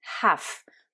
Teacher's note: c'est un mot où on prononce bien le H, comme dans bon nombre de mots en anglais. En revanche, là, il y a le L qui est muet